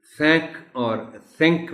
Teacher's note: یہ آپ کی زبان دونوں اوپر اور نیچے والے دانتوں کے درمیان تھوڑا سا آگے ہو کے ان کو ٹچ زیادہ قریب سے نہیں کرے گی بٹ قریب جائے گی